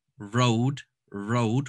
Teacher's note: when i say road in english with my accent my tongue kind of curves a bit and it goes back